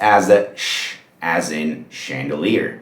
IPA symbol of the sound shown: ʃ